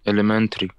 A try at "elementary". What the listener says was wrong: Yes, elementary.